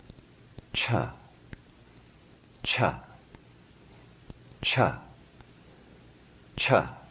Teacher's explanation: a hard sound unvoiced minimal resonance in the throat but this time having full breath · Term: aspirated